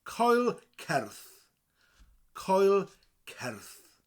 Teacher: then it's the word cer with a rolling R, cer, and a th.